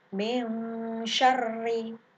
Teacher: Pada ayat kedua surah Al-Falaq terdapat hukum bacaan yaitu ada nun sukun bertemu dengan huruf shin, dinamakan bacaan ikhfa hakiki. Cara membacanya dibaca samar. Min syarri, tidak boleh bin syarri, tapi dibaca samar.